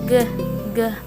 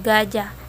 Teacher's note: dihasilkan oleh vellum atau langit-langit lunak sebagai artikulator pasif dan dorsum atau Pangkal lidah sebagai artikulator aktif